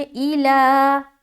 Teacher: آگے ایلا، حمزہ زیر ای، لام کھڑا زبر لا، لا کو کھینچنا ہے